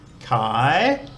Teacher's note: light syllable makes a rising tone so when we say that we need to start off quite low and then try to go up at the end